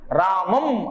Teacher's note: పెదవులు కలుస్తాయి దీంతో పాటుగా నాసికానుస్వారస్య ముక్కుతో పలుకుతాం ఏది నాసికతోటి అనుస్వారం సున్నా రామం అనగానే ఆ చివర సున్నా ముక్కుతో పలుకుతాం